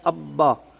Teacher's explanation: جیسے پچھلے اسباق میں گزر چکا کہ مثال کے طور پر ہم لکھتے ہیں اب با، اب با، تو جب ہم اس کا ادغام کریں گے تو بن جائے گا ابا، یعنی با جو ساکن ہے وہ دوسرے حرف میں مل جائے گی اور وہاں پر تشدید آ جائے گی